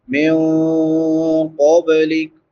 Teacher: नून साकिन के बाद हरूफ इख्फ़ा में से क़ाफ है, तो यहाँ पे इख्फ़ा होगा।